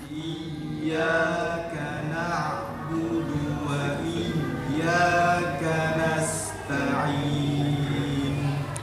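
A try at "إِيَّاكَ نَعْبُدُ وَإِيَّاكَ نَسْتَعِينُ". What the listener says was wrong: Di huruf dal masih terdengar tebal. Di huruf dal kenapa bisa tebal? Karena lidahnya terangkat berlebihan. Na'budu. Ya, hanya ujungnya aja.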